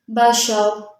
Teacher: با زبر با، شین زبر شا، بشا، را دو پیش رن، بشارن، بشارن، بشار، را کے اوپر دو پیش، را کو موٹا پڑھیں گے۔ حالت وقف میں را ساکن ہو جائے گا، دو پیش ختم ہو جائیں گے، پیچھے والے حرف یعنی شین کے اوپر زبر ہے، شین کو جب را سے ملائیں گے تو را کو موٹا پڑھیں گے۔